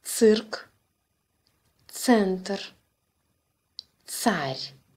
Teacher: Similar to the Ц in English, nuts, but pronounced together as one sound.